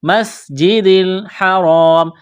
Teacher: سین میں سیٹی کی آواز پیدا کریں گے، سین کو باریک کرنا ہے